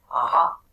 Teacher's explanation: c'est un A qui vient du fond de la gorge